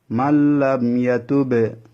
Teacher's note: নুনটা লামের মধ্যে প্রবেশ করে গেছে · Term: ইদগামে বেলা গুন্না